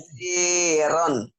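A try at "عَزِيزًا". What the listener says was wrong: Bukan, sama kan ada titiknya. Kalau ron nggak ada titiknya.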